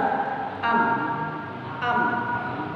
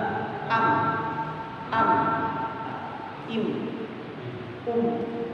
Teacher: Menempelkan kedua bibir tanpa tekanan tapi disertai gunah.